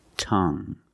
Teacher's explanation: the end is silent so we pronounce it like young tongue you have only the nasal sound there's no G it's just a sound